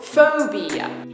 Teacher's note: that's a three syllable word with the stress on the first syllable